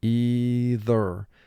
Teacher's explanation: with the second sound for th you do vibrate your vocal chords to make the sound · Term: voice sound for th